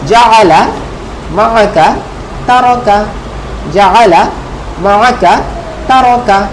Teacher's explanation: আইনটা কিন্তু গলায় চাপ দিয়ে উচ্চারণ করতে হবে।